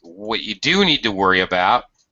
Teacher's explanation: again with emphasis on do